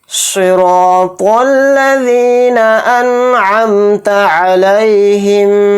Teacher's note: را الف زبر را، اس میں حروف مدہ یعنی الف مدہ ہو رہا ہے تو را الف زبر را کو ایک الف کی مقدار کھینچ کر پڑھیں گے، اور صاد کو یہاں پر موٹا پڑھیں گے. صاد حروف مستعلیہ کے حروف میں سے ایک حرف ہے. · نون کو ظاہر کر کے پڑھیں گے، اسی طرح سے میم کو بھی یہاں پر ظاہر کر کے پڑھیں گے